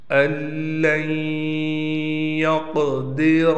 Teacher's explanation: इस नून को हमने नहीं पढ़ना, डायरेक्ट इस हमज़ा को हम इस लाम से मिला देंगे। · क़ाफ को मोटा भी करेंगे, क़ाफ पर क़लक़ला भी करेंगे और रा को भी पुर पढ़ेंगे।